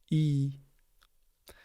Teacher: Par contre, quand il est en voyelle longue, il se prononce i. Donc comme s'il y avait deux i côte à côte.